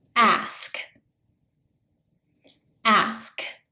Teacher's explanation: It's almost like they switched the K and the S in the word.